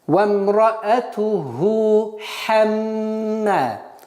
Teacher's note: Так как после ха встречается другой гортанный звук ха, нужно обращать внимание и их разделить.